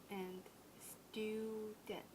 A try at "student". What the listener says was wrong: A little more of the yod sound. Student. Student.